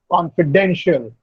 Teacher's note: Or confidential, the stress is on den.